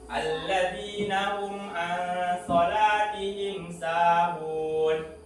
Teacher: Mim sukun ataupun mim mati bertemu dengan ain, maka hukum bacaannya adalah ijhar safawi, dibaca jelas.